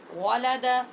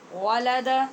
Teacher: واو کو ہونٹ گول کر کے پڑھیں گے، لام باریک پڑھیں گے